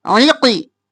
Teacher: قاف موٹا عین گلے کے درمیان سے